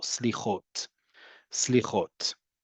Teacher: So the term for it is slichot, right? Again, you hear the emphasis on the last syllable, slichot, slichot.